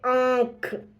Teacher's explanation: नाक और गले दोनों से आवाज आ रही है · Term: अनुनासिक ध्वनि